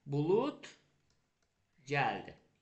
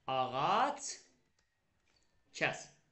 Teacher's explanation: sondakı D özünün kar qarşılığı kimi tələffüz olunacaq